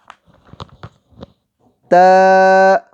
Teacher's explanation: زبان کی نوک جب اوپر سامنے والے دو دانتوں کی جڑ سے لگے تو ت ادا ہوتا ہے